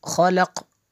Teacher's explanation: خلق آخر پہ قاف قلقلہ ہوگا قاف پہ۔ خا زبر خا، لام زبر لا، قاف لام زبر قل، خلقل۔